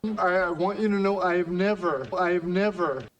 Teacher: 有人给这种由于和前面的单词连读而造成词前端的 H 不发音的现象起名叫击穿